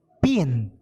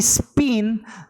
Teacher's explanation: the P sound in pin is said to be aspirated, and that in spin is unaspirated. In English, even though the sounds are different, it does not make any difference to the meaning of the word that you use.